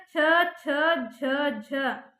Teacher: ಇವು ತಾಲುವಿನ ಭಾಗದಲ್ಲಿ ಹುಟ್ಟುವುದರಿಂದ ಅವಕ್ಕೆ ತಾಲವ್ಯ ಅಕ್ಷರಗಳು ಅಂತ ಕರೀತಾರೆ